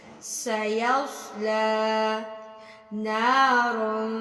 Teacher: سیصلا، سین سواد فرق کرنا ہے، اس میں سواد کو تھوڑا موٹا پڑھنا ہے